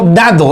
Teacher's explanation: La primera D de dado es una D oclusiva.